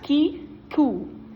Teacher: your lips are already rounding for the ooh sound before you finish saying the K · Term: co-articulation